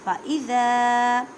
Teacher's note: ذال کو زبان کا سرا اور اوپر کے دانتوں کے اندرونی کنارے سے ادا کریں